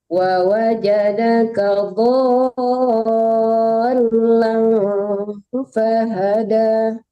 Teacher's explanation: jangan langsung ditasdidkan tapi dipanjangkan dulu , jangan lamnya dilamakan tapi di dotnya yang dilamakan wawajadaka dhallan